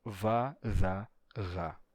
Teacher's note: as oclusivas sonoras antigas não são mais não são mais oclusivas elas são fricativas